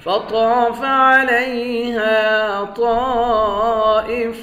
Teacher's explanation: طا کو موٹا پڑھیں گے، ایک الف کے مقدار کھینچ کر پڑھیں گے